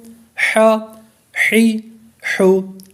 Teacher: ح زبر ح، ح کا جو مخرج ہے وہ حلق کے درمیان والے حصے سے، حلق کا جو درمیانی حصہ ہے وہاں سے نکالیں گے پھر یہ ادا ہوگا۔ ح زبر ح، ح زیر حی، ح پیش حو، ح حی حو۔